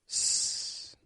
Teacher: S, it flows out. There's a flow of air that pushes the sound out between the tongue and teeth. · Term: fricative